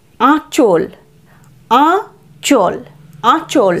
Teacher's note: আয়ের উচ্চারণ এখানে নাসিক্য,